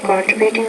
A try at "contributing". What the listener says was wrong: Word stress, not contributing, contributing. Contribute. So make sure you put the stress in the right part of the word because it becomes a little distracting.